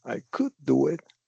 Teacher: you're going down up. And this is showing contrast, implication. You're doing some kind of maybe sarcasm.